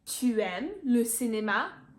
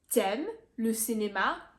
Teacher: we've completely omitted the u in the tu by squashing the t next to the m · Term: contracting them